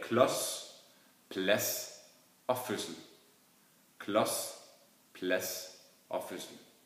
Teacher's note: Man hører heller ikke noget D i kombination med S, når det står før S. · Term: de stumme konsonanter